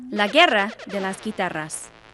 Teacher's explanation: the G is neither silent nor is it pronounced as strongly as a hard G in English